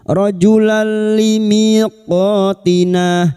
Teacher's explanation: fathah tanwin atau fathatain bertemu lam idgham bila gunah masuk tanpa mendengung masuk pada huruf lam tanpa mendengung rojulan limiqotina limiqo mi kasar